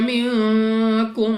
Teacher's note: नून साकिन के बाद काफ हरूफ इख्फा में से है, इख्फा का कायदा है, गुन्ना करके पढ़ना है।